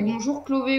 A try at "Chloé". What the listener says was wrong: c'est Chloé, c'est pas Clové.